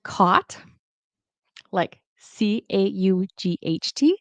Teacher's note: I pronounce caught like CAUGHT, the same as COT